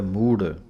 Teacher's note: ਮੂੜ ਦੇ ਰਾੜੇ ਦੇ ਥੱਲੇ ਪੈਰ ਵਿੱਚ ਹਾਹਾ ਹੈ, ਭਾਰਾ ਕਰਕੇ ਬੋਲਣਾ ਹੈ ਮੂੜ। ਇੱਥੇ ਹੀ ਵਿਸਰਾਮ ਹੈ।